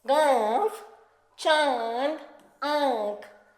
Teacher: अनुनासिक मतलब चंद्रबिंदु और इसका उच्चारण करते समय हमें नाक और गले दोनों की सहायता लेनी पड़ती है।